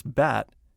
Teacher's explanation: To pronounce bat, keep your jaw down, pull your lips back, and try to simultaneously say ah and eh. Your mouth should form the shape of a box.